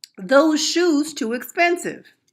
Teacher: The substitution of D for TH may confuse some who do not speak AAVE.